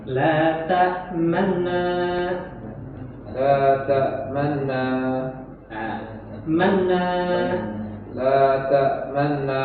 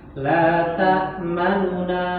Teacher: Jadi terdengar u-nya. Nu-nya terdengar tapi cepat. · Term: rom